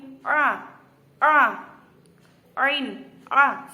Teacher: Kemudian selanjutnya ada huruf ain. Nah, huruf ain ini yaitu tempatnya di tengah tenggorokan. Huruf mangap jelas tanpa ada dengung atau mendesis.